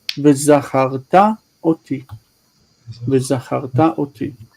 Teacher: It wouldn't be u because u is there because of shva. So it would just be ve.